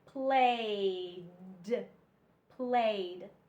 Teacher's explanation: you don't hear the E you only hear the d